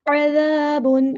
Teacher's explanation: عین کو وسطی حلق سے ادا کرنا ہے یعنی مڈل تھروٹ سے ادا کرنا ہے